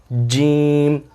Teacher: جیم کے آخر میں میم کی آواز آتی ہے